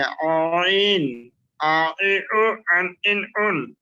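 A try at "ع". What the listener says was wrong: হ্যাঁ খেয়াল করেন, আইন একটু টান দিয়েছেন, ওখানে টান ছাড়া সরাসরি নিচের দিকে নামিয়ে আসবেন। আইন, দুইটা যেন না হয়, আইন এরকম যেন না হয়। প্রথম জায়গায় বসাবেন, বসে হঠাৎ করে নিচে ঝটকি দিয়ে নিচে নিয়ে আসবেন। আইন আইন,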